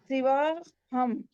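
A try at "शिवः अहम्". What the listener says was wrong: No. Why are you having difficulty with saying visarga? It is Shivaha.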